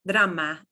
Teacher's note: drama is a small R. That's a little trill.